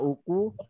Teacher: yang u-nya tipis, kofnya tebal ya